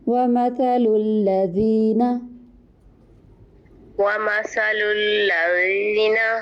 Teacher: لام موٹا نہیں کرنا، دونوں لام باریک ہیں. مثلو میں بھی الذین میں بھی.